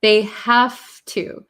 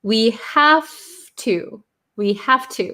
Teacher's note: very quickly it becomes ha to ha to have to so this V kind of changes to an F